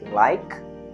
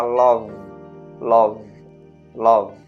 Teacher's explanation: Observe que no verbo like, o k ele não faz nenhum tipo de vibração. Por isso que ele é colocado nesse segundo grupo.